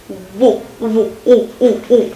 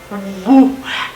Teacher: So it's a semi-vowel and it's a bilabial one. So we need both lips, woo, and a bit of a vowel sort of quality in it.